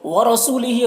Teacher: रौ को पुर पढ़ेंगे, सू में वाव मद्दा है इसे 1 अलिफ के बराबर खींचेंगे। हा में खड़ा ज़ेर है ये या मद्दा की तरह होता है, इसे भी 1 अलिफ के बराबर खींचेंगे।